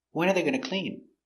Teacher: So when are, pronounce winner, winner. Important word, when, put the stress, when. When are they going to clean? Intonation goes down at the end.